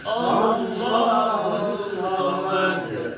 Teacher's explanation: Hus digentak itu, sebab ada syiddah di situ. Allah 2 kali syiddah.